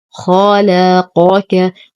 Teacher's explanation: خلقك ننتبه كثيرا لهذه الكلمة من عدم الاختلاس ومن تخليص المفخم من المرقق. نفخم الخاء نرقق اللام، نفخم القاف نرقق الكاف. خلقك، وننتبه من مجاورة القاف مع الكاف لأنهما من نفس المخرج.